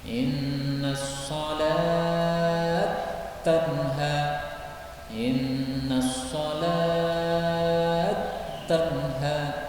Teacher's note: Nah, ini berarti idgham. Karena tak pertama dimasukkan pada tak yang kedua.